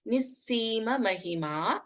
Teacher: ಮಹಿಮಾ ಸೊ as mentioned earlier ವಿಸರ್ಗ and then we have ಸ this is pronounced as ನಿಸ್ಸೀಮ we don't chant the ವಿಸರ್ಗ here